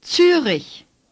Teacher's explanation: The R is gargled.